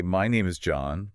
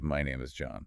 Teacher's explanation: Question inflection or uptalk at the end of a statement. It makes a statement sound like a question seeking validation.